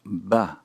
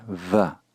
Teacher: hand you see the bait consonant written without the dages then there is no stopping of the air flow the resulting sound is a v sound · we must purse or actually fully close the lips, stopping the airflow, resulting in the sound B.